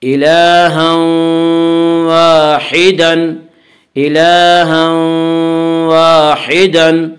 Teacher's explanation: بعد یومنو کے 4 حرفوں میں سے واو آ رہا ہے، اس لیے تنوین کو واو سے ملا کر غنہ کے ساتھ پڑھیں گے اور اسے ادغام ناقص کہتے ہیں۔